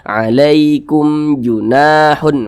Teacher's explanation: mim di depannya sini maka berarti ini hukumnya adalah izhar syafawi karena dia izhar maka dibaca jelas tidak berdengung jadi dibaca pendek saja